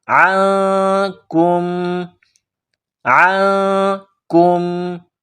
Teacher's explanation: نون ساکن کے بعد کاف ہے، حروف اخفا ہے، تو آواز ناک میں پیدا کرنی ہے، غنہ کرنا ہے